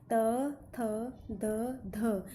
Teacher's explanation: इन वर्णों के उच्चारण में जीभ की नोक ऊपर के दांतों की जड़ को स्पर्श करती है। जीभ की नोक जो है, आगे वाला भाग जो है ऊपर के दांतों को स्पर्श करता है, इसलिए इन्हें दंत्य कहा जाता है।